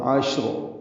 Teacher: شین اور را وقفاً دونوں ساکن ہیں تو اجتماع ساکنین ہوا عشر۔ شین ساکن پہ ہمس ہوگا، تفشی ہوگی